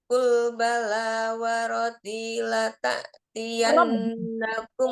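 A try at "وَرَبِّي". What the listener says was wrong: Rabbi. Ba tasdid warobbi bukan warodi warobbi ba.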